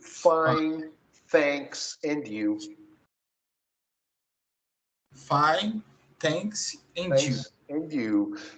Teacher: É um som interdental, é fa, é língua entre os dentes. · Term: som do TH